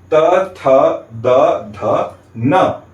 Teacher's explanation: तो जब भी हम इन 5 वर्णों का उच्चारण करते हैं तो अंदर से आती हुई वायु हमारे दांतों को स्पर्श करते हुए बाहर निकलती है। इसलिए त, थ, द, ध, न का उच्चारण स्थान हो गया दांत और इसीलिए इनका वर्ग हो जाएगा दंत्य।